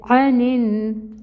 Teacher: عین کو نکالیں کہاں سے؟ وسط حلق سے۔ فتحہ کی حرکت 1 کاؤنٹ، نون کو نون سے ملائیں گے کیونکہ آگے تشدید آ رہی ہے، ٹائم ٹیکنگ ہوگا، ٹائٹلی جوائن کریں گے نون کو نون سے، اور فتحہ کی جو حرکت ہے وہ 1 کاؤنٹ ہی پڑھیں گے۔